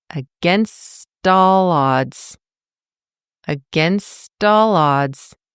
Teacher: Native speakers smooth it out. Because a vowel sound follows the T, it turns that T into a flap T. So it makes a very quick sort of D sound.